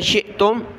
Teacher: حمزہ ساکنہ جھٹکا دیا